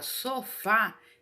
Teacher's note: é uma palavra oxítona porque ela é uma palavra oxítona porque a sílaba mais forte dela é a última